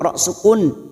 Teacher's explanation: ra sukun yang sebelumnya duma kita baca tafkhim atau tebal